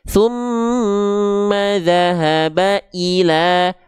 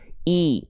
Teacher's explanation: Tengah lidah teman-teman ketika kasroh diangkat ke atas, sehingga bunyinya I, tidak jadi e